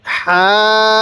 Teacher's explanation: হা এর মধ্যে এক আলিফ মিমের মধ্যে চার আলিফ